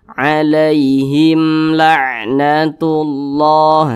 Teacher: maka semua hukumnya namanya izhar syafawi dan dibaca tidak berdengung. Jadi dibaca jelas.